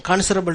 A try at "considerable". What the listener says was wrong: You want to say it's considerable time. You said considerable, but it's considerable. So the stress here is on the second syllable, not the first.